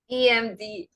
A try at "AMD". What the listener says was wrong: A, remember, AMD.